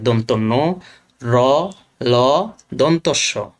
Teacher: এই চারটি বর্ণ উচ্চারণ করতে গেলে আমাদের জিহ্বার ডগা একদম দাঁতের গোড়াতে লাগে। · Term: দন্তমূলীয় ব্যঞ্জন